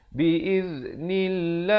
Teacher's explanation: lafz jalalah dibaca nipis, dua harakat